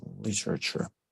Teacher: She's saying it with her American flap T. Yes, when this with this special T sound, it's called flap T.